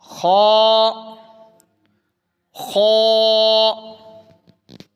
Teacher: تو پیچھے ہم دیکھتے ہیں کہ یہ خا یہ حروف مستعلیہ میں سے ہے، ٹھیک ہے، یہ حروف مستعلیہ، تو اس کو پر کر کے بھی پڑھنا ہے